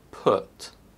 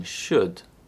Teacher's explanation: is part of the single vowels group to produce this sound partially close your mouth round your lips and position your tongue in the center of the mouth then use your vocal cords to produce a short sound from the back of your throat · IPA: /ʊ/